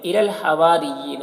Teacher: لام ساکن حرف ہے تو پیچھے والے متحرک حرف لام سے مل کر پڑھا جائے گا۔ ہوا یہاں پر دیکھیے الف مدہ ہے، اسے ایک الف کے برابر کھینچیں گے، را کو باریک پڑھیں گے، اور یا میں کھڑا زیر ہے، یہ یا مدہ کی طرح ہوتا ہے، اسے ایک الف کے برابر کھینچیں گے۔